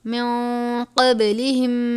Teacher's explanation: نون ساکن کے بعد قاف ہے حرف اخفا میں سے، اخفا کریں گے. قب، قاف با زبر قب، با ہے حرف قلقلہ میں سے، قلقلہ کریں گے.